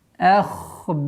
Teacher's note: Ошибка. Надо с мягкой хамзы уходить на твердый ха